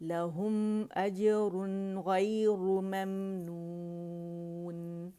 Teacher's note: میم ساکن کے بعد بھی ہمارے پاس حمزہ آ رہا ہے تو اظہار شفوی ہو رہا ہے